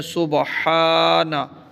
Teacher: سبحانہ کا میں جو ہا ہے یہ باریک ساؤنڈ کے ساتھ پڑھی جائے گی، بھاری ساؤنڈ کا سبحانہ، ہانہ نہیں پڑھنا، بلکہ گلے سے نکالنی ہے، حروف حلقی ہے، اور اس کے اوپر یہ کھڑا زبر بھی ہے، تو ہم اس کو ایک الف جتنا لمبا کر کے پڑھیں گے، یہ ٹھیک ہے۔